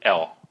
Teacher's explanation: Mà mình phải cuốn lưỡi tí xíu, mình làm cho nó gọn hơn là cái L của tiếng Việt. Cái L của tiếng Việt hơi mạnh quá, cái L này nó nhảm tí xíu.